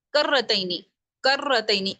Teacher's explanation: اس را کو 2 مرتبہ پڑھنا ہے. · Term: تشدید